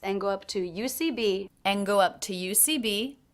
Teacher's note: I definitely reduce the word and here by dropping the D